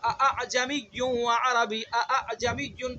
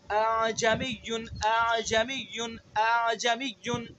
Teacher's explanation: تو اس وجہ سے اس حمزہ کے اندر تسہیل کرنی ہے، نرمی سے پڑھنا ہے. پہلے حمزہ کو تحقیق سے پڑھنا ہے، دوسرے حمزہ کے اندر تسہیل کرنی ہے. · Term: حمزہ مسہلہ